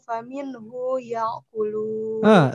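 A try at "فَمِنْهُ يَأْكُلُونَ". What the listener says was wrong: Hu-nya pendek. Faminhu ya'kulun.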